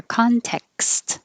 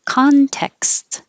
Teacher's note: Just go from the K to the S and it will release a little bit of air. Context. You need that little hesitation to make the K position.